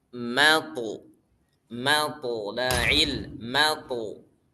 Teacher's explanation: Jadi mimnya tipis, to-nya tebal.